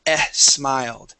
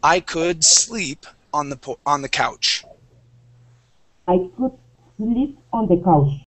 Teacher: make sure to focus on those S sounds so that you do not pronounce an eh in front